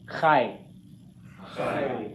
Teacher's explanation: The two sounds merge together. The ah and the y merge together. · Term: diphthong